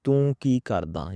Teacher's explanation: I'm pronouncing R sound properly like Punjabi rara sound like it's a rolling R